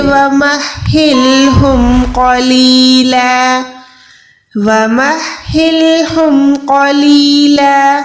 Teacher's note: लाम दो ज़बर पे रुक रहे हैं तो लाम ज़बर ला हो जाएगा क्योंकि यहाँ पर स्टॉप है